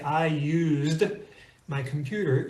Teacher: It sounds like a Z. When you say, I used my computer, you can feel the Z, the vocalization in your throat.